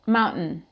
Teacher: Mas aí sai um som de T de glottal stop